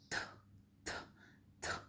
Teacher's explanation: एक वॉइस्ड है, एक अनवॉइस्ड है, जिसमें मतलब एक में आप बहुत थोड़ा सा जोर लगाते हैं, जैसे बोलते हैं थ, इसमें आप वॉइसलेस, जैसे आप थूकते हैं तो कैसे करते हैं थ, तो वो वाला थ है ये, ठीक है। इसमें आवाज़ नहीं आ रही, सिर्फ खाली टच होके जो हवा निकल रही है